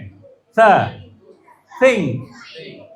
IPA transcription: θ